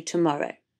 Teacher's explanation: tomorrow where the schwa is in the first unstressed syllable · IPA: /ə/